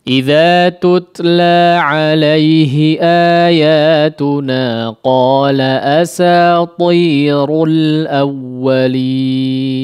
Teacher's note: pertahankan ketebalan dua huruf ini, ta dan ra-nya.